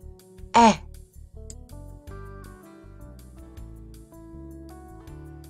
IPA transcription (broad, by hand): ɛ